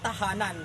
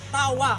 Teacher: ang dulong dila ay dumidikit sa loob ng mga ngipin sa itaas samantala nabibilang din ito sa paraan ng artikulasyon na pasara na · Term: pangngipin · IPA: /t/